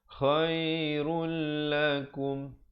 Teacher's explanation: ra baris depannya terus masuk ke dalam lam tanpa didengungkan. Khairul lakum. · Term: idgham bila gunnah